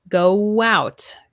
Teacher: Here also with W, go out. When we have our 2 O's, go out. It's like we have a W there. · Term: W sound